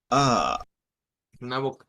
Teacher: Hemos dicho que esta es una una A con la lengua hacia el centro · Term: A centralizada